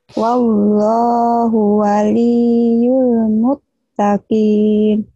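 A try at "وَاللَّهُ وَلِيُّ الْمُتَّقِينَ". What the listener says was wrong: Iya bagus tapi hunya jangan panjang ya. Wallahu waliyyul muttaqin.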